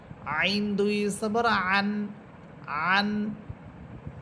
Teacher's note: আইন এটা কন্ঠনার মধ্যখান থেকে বলবেন কিন্তু এটা শক্ত হবে না